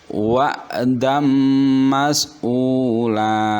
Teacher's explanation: Fathah tanwin bertemu dengan huruf mim, maka suara n-nya hilang menjadi suara m. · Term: bi gunnah